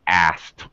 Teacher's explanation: Drop the middle consonant sound. Drop the sound of the K.